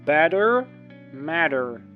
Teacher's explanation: якщо т між двома голосними, то воно американською вимовляється д